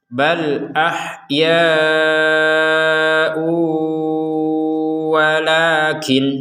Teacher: Kemudian setelah harokat bendera ada tanwin bertemu wawu, maka kita masukkan tanwin ini ya, ini kepada huruf wawu, sehingga yang awalnya tulisannya ahyaun. Nah, sekarang karena bergabung dengan huruf wawu, ahya'u disertai dengungan.